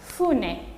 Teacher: Los japoneses no pronuncian hu, sino fu.